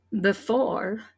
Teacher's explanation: I think I hear the stress on the second syllable